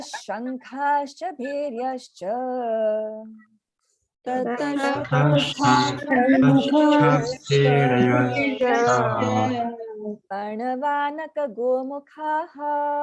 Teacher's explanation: Whenever there is a sh or a sa, then the visarga will take on the sound of that sh